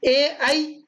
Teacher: ए ऐ का उच्चारण स्थान कंठ तालु है